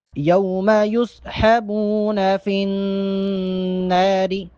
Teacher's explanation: نون پر تشدید ہے، نون مشدد ہے، یہاں پر غنہ کریں گے۔